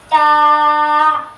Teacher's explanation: زبان کی نوک اور اوپر کے دانتوں کی جڑ سے ادا ہوتا ہے